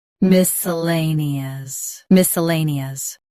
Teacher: Both US and UK have the same pronunciation of this word. Stress lay. Keep suh soft and nee clear. · Stress lay. Keep s soft and ni clear.